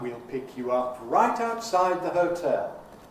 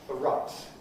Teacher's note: So this is a low pre-head with some stresses in it. Then a high head, high stepping head, right side, and a low fall on tail.